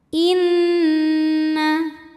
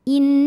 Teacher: Cara membacanya, nun ini didengungkan secara sempurna. Jadi bunyi N tahan kurang lebih 2 harokat sampai ada getaran ke hidung. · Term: gunnah musyaddadah